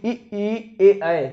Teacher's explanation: अग्रस्वर जो है जीभ के आगे वाले भाग से बोला जाता है।